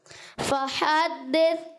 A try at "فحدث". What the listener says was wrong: اچھا پہلے آپ نے دال میں بھی زبان باہر. فحدث ایسے نہیں. فحدث. تال میں زبان باہر نہیں آنی چاہیے.